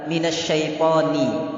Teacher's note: menipiskan huruf nun pada kalimat minas syaithoni jadi ni itu tipis